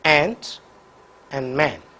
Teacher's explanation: the front of the tongue is raised to a position in between half open and open the lips are unjointed this vowel also will occur only in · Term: front vowels